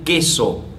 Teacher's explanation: el fonema oclusivo velar sordo de queso